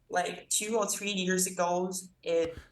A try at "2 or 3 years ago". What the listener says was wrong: 2 or 3 years ago, so he's linking that S to the ago. 2 or 3 years ago, good.